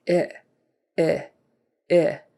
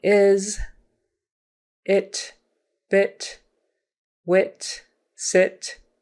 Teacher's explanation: short I, and it's your jaw's even up farther. Your mouth is more closed. So let's go I. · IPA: /ɪ/